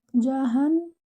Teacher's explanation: Jahannam. Your noon here is with the shadda, so give it akmal gunna. That means most complete gunna.